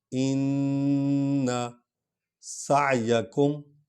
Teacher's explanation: سین اور عین کو اکٹھے پڑھنا ہے اور عین کا قلقلہ نکلتا ہے